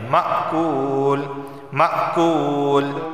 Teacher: کعصفم کعصفم مأکول، اس کو معقول نہیں پڑھیں گے بلکہ مأکول، میم حمزہ زبر ما جھٹکا بھی دیں گے، مأکول مأکول، کاف واو پیش کو ایک الف کے برابر اسے کھینچ کر پڑھا جائے گا